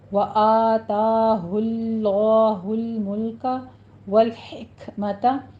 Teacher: لام کو سٹاپ کریں گے اور کاف کے اوپر حمز کریں گے